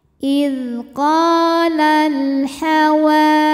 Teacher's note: Sebab alif lam menghadapi huruf qamariyah yaitu huruf H. Maka cara bacanya lam dibaca dengan jelas atau disebut dengan izhar qamari. Idqalal hawa.